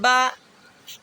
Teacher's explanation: سامنے والے ہونٹوں کو دبا کے با ادا ہوگا اور میم کا مخرج بھی یہی ہے